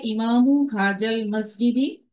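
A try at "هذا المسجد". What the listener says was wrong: জাল না আপু, হা জাল না, হা দা। আমার সাথে বলেন হা দা।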